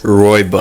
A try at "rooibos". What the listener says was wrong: Actually, don't say bus because that's the wrong pronunciation. Rooibos. Rooibos. Rooibos, if that makes sense. Boos. Not bus. Boos, not bus.